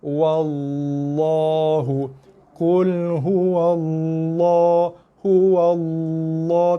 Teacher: Sebenarnya tidak perlu dimoncongkan sebab dia tebal hanya pada lam, bukan tebal pada bibir. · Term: tebal pada lam